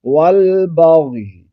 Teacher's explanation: غین کو موٹا بھی پڑھیں گے اور غین ساکن رکھیں گے، ہلائیں گے نہیں